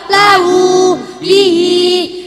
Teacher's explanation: Mat sila qasiro setiap hi dan hu yang dibaca panjang, panjangnya 1 alif atau 2 harokat.